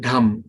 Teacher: Like when we say drum, right? Dum with a H aspiration, it is called dham.